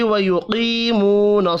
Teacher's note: قاف پر پڑھا جائے گا، یا اور واو مدہ 1 الف کے برابر کھینچ کر پڑھے جائیں گے